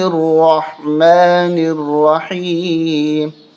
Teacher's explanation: را کو موٹا کریں گے، حا کو حلق سے نکالیں گے، اور اس را کے اوپر تشدید ہے تو سختی کے ساتھ موٹا کریں گے، اور حا کو حلق سے نکالیں گے۔